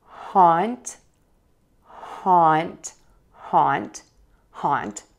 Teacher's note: The key is open wide for haunt, for that ah vowel. Tongue is low in the front, the back is pulled up.